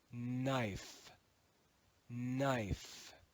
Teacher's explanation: the middle of the word is going to become I and the final schwa will become silent in Middle English we would read this word as kanifa kanifa · In the cluster KN, the K in modern English is going to be silent. The long E in the middle of the word is going to become I, and the final schwa will become silent.